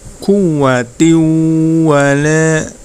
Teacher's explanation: Jadi cara membacanya mendengung ya. Langsung masuk ke huruf waw dengan mendengung. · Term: idgham bi gunnah